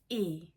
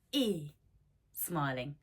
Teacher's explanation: so it's closed frontal and unrounded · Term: e sound